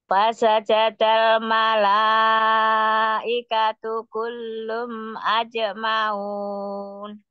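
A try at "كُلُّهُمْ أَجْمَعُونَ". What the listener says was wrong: Kullu, bukan kullum, tapi kulluhum. Kulluhum ajma'un. Umi tadi kedengarnya kullum. Ketinggalan lunya kulluhum.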